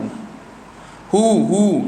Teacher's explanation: Kita keluarkan suara, maka kita perlahankan suara, lebihkan angin keluar pada huruf hu. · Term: huruf yang hamas